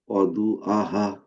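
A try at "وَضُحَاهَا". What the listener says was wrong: আহা না তো, প্রথমটা হা, পরেরটা হা। আ না তো, প্রথমটা হা, এটাও হা, এটাও হচ্ছে গলার মাঝখান থেকে, একটা গলার ভিতর থেকে।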